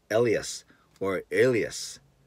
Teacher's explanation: I'd like to put the emphasis on the first syllable, i.e. like this, Elias or Elias, not Elias or Elias.